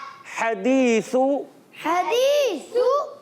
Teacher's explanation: हा हलक के दरमियान वाले हिस्से से